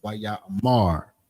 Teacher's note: sometimes you putting that more emphasis on that last syllable, which is the mar. Not necessarily ra, because the ma and the ra are connected. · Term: stress on the final syllable